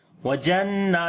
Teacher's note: नून के ऊपर शाद है, गुन्ना करेंगे, लंबा भी करेंगे